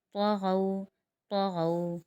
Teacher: طا حروف مستعلیہ میں سے اس لیے ہم نے اس کو موٹا ادا کیا اور غو کے اوپر واولین بن رہا ہے اور وقف ہو رہا ہے۔